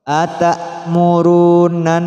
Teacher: Karena terdapat nun tasydid. Jadi nun yang bertasydid didengungkan.